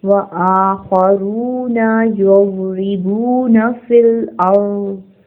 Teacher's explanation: खौ heavy letter है, रॉ heavy letter है. रॉ के ऊपर पेश है इसलिए इसको पुर पढ़ा जाएगा और 2 हरकत खींच के पढ़ेंगे. नून की हरकत को नहीं खींचेंगे. · हमजा के ऊपर खड़ी ज़बर है, इसको खींचेंगे. खौ हैवी लेटर है, रॉ हैवी लेटर है.